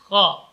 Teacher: Kha, huruf kha keluar dari ujung tenggorokan. Kha, dia bukan huruf yang bergetar. Kha, rakhawah dan huruf hamas.